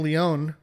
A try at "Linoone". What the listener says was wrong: Look, Lin. You're saying Leon. Lin. Linoan.